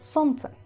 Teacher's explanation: Incluso la lengua no sé qué me está haciendo ahí, que es complejo decir солнце. Y nosotros decimos en ruso солнце, evitando la L por completo